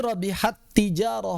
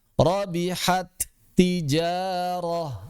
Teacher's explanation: langsung wajib idgham menjadi satu huruf yang kedua. Rabihat tijaroh asalnya dua huruf jadi satu.